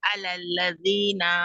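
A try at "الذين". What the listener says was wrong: अलल्लज़ीना, नून को खींचना नहीं है।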